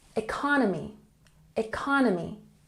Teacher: And economy has the emphasis on the second syllable.